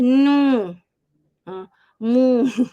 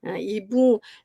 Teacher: bunyi sengau, memang bunyi dia sengau, memang keluar angin kuat hidung